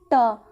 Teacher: जो हमारी जीभ होती है वे पलटकर हमारी कहाँ टच होती है, तालु पर टच होती है। तो इससे हमें पता चलता है इनका जो उच्चारण होता है मूर्धा द्वारा होता है।